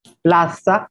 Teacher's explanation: la z se convierte en ese